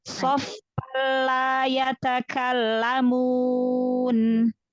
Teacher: Idgham bila gunnah tanwin ketemu huruf lam, maka langsung idgham ke huruf lam.